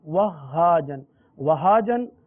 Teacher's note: ہا پڑھیں گے تو ہا پر تھوڑا سا رک کر ہا کی ادائیگی کریں گے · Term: تشدید